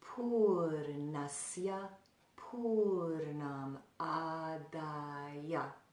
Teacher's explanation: So in that line, it would be Pūrṇasya Pūrṇam Ādāya. The last A is only 1 count, but the first 2 are 2 counts.